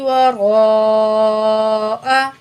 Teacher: را کو پر پڑھیں گے، مد کے بعد حمزہ اسی لیٹر کے اندر ہے تو یہ مد متصل ہے، 5 الف کے برابر کھینچ کے پڑھیں گے